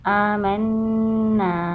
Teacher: کھڑا زبر لمبا ہوتا ہے، اس کو ایک الف کی مقدار لمبا کرتے ہیں، اور یہ الف مد ہے، اس کو بھی ایک الف کی مقدار لمبا کریں گے، نون شد پہ گنہ کریں گے۔